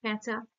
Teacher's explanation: দেখো এখানে অনুনাসিক যুক্ত হচ্ছে স্বরধ্বনি অনুনাসিক যুক্ত হচ্ছে · পেচক শব্দটার মধ্যে দেখো কোনো নাসিক্য ব্যঞ্জন নেই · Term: শতনাসিক্যী ভবন